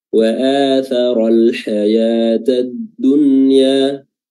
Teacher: nunnya dibaca jelas, ya, dibaca izhar, tidak dibaca idgham